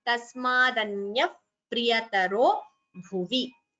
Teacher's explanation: visarga followed by pa, so upadhmaniya